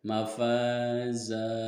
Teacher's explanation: Mafaza di sini juga ada mad iwad atau mafaza, di sini juga ada mad tabi'i. Karena huruf fa di depannya ada huruf alif yang disukun dan diulangi dengan harokat fathah, maka mad tabi'i. Panjangnya 2 harokat.